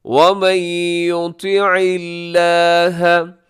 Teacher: لفظ اللہ یہاں باریک ہے کیونکہ اس سے پہلے عین کے نیچے زیر ہے · نون ساکن کے بعد یا ہے تو وہاں پہ ادغام ہوگا غنے کے ساتھ